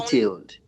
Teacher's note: I did not hear you say detailed, the D sound